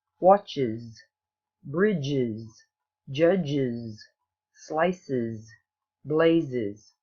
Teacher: The third way to pronounce the S ending is to add a separate syllable, and it sounds like is